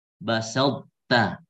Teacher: sisa sifatnya adalah itbaq di ta masih ada